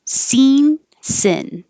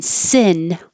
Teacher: tense I have seen that it sounds the same scene and the tongue is very high e and the next one sin the tongue is lower scene sin so it's the middle of the tongue that kind